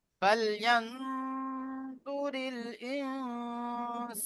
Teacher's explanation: কাফ এই 15টি অক্ষরের মধ্যে সিন এসেছে নুন সাকিনের পরে তাহলে নুন সাকিনকে নাকে তুলে একালি পরিমাণ গুণনা করে পড়তে হবে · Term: ইকফা